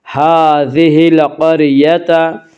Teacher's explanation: قاف کو پر پڑھیں گے، قاف حروف مستعلیہ میں سے ہے